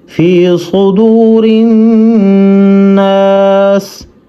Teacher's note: صاد کو موٹا کر کے پڑھنا ہے